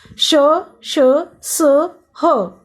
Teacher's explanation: इन व्यंजनों के उच्चारण में हवा मुंह से रगड़ खाकर बाहर निकलती है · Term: ऊष्म व्यंजन